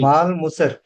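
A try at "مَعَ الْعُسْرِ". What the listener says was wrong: ఐన్ ఇది, మీమ్ కాదు, ఐన్ ఇది. మాల్ ఉస్ర్.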